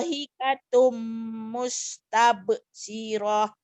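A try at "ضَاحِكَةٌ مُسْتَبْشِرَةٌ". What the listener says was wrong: syirahnya pendek. Dohikatum mustab. Syirah. Syirah. Nggak ada panjang ini Bu ya.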